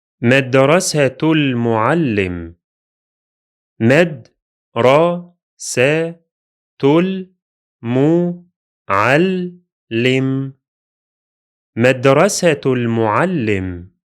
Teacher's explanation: the hamza of L will be silent because we are in connected speech. And the lam will be pronounced because it is lunar, قمرية. So the connection happens from the T sound of the Ta Marbuta to the lam of the definite article, giving us the following pronunciation.